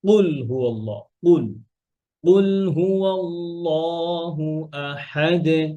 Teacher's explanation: এরপরে আর যদি আমরা বলি কফ দিয়ে, আমাদের আহ জিহ্বার গোড়ার উপরের যে নরম পার্ট, ওখানে লাগাই যদি বলি, তখন হয় কফ